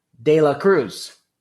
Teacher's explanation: Again, it's the other alveolar sound where, again, my tongue has to tap on my alveolar ridge